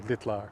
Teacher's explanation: So in something like litlar, where this turns into a three-syllable, this would turn into a three-syllable word, we're dropping the second one, and now we have that root vowel I in front of a TL. The I is going to be shortened.